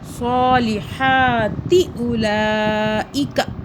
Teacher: کاف کو نہیں کھینچنا آپ نے اور اس تا کو نہیں کھینچنا